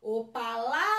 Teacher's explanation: o lá é a minha sílaba tônica, é a minha sílaba forte.